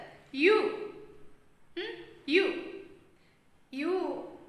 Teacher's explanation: So here front of the tongue raised towards the hard palate. So we pronounce it is voiced palatal.